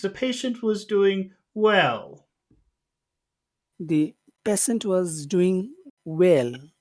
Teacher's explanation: we're starting high with patient because it's the beginning of a phrase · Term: high tones